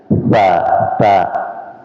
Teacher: ujung lidah ketemu dengan gigi seri depan, ya, atas ta, dan lidah bagian tengah itu dijauhkan dari langit-langit supaya tidak berbunyi syah, gitu. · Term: makhraj ta